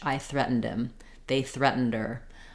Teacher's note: with him or her we might drop that H